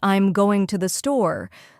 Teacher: the words going and store might be stressed, while I'm and to the are said quickly and softly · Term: selective stressing